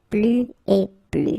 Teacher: you can see that I don't pronounce the final S